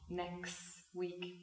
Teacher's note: So next week, of course, if I say it, overpronounce it, very British, or if I say the words in isolation, you hear a t, but in a sentence, I come and see you next week. Next week, there's no t anymore. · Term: elision